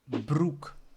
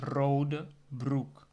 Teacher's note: so in both instances I use the rolling R, the R sound.